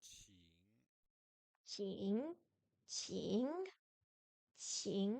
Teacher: Le ing se prononce comme en anglais, c'est-à-dire le reste dans la gorge.